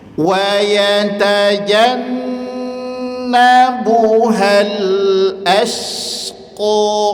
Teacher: Hamzah tipis, syin tipis, qof tebal. Jadi hamzah dan syin itu senyum aja gak perlu dibaca as.